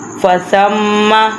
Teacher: ثم سا کی سیٹی کی آواز نہیں نکلنی چاہیے، اور ثم کہ تھوڑا سا ناک میں سے آواز نکالنی ہے